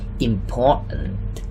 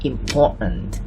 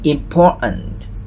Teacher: When we read it fast, we will say 'impor_ant'. The t sound here is silent